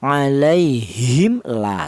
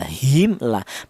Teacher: Mem matinya dibaca idhar atau artinya idhar itu dibaca jelas ya. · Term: idhar syafawi